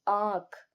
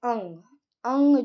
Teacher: अनुनासिक से जो हवा निकलती है वो मुख और नाक से निकलती है, जिसके कारण ये अनुनासिक कहलाते हैं।